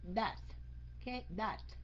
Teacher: Cái âm TH đầu câu phải la lưỡi. Okay, đọc thành chữ D á, nhưng mà phải la lưỡi.